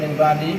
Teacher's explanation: nun sukun bertemu dengan huruf ba, itu adalah bacaan iqlab. Itu caranya dengan mengingkem ya bacanya.